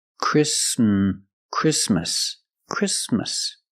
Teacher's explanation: the t is between consonant so it is silent link the sound s with the m